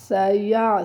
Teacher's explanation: سین میں سیٹی کی آواز پیدا کرنی ہے